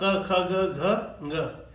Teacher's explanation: अ, आ, क वर्ग और विसर्ग, इसका जो उच्चारण स्थान है वो है कंठ और कोमल तालु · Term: कंठ्य ध्वनियां